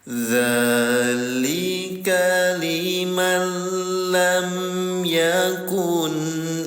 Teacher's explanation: Bilanya tanpa gunanya dengung. Jadi setelah ditempelkan ke huruf lam tanpa didengungkan alias tanpa ditahan dileburkan saja tuh. Makanya dikasih angka 0, hanya dileburkan saja ya. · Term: Idgham bila gunah